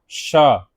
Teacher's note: शा ध्वनि का तालु से, हम तालु से बोलेंगे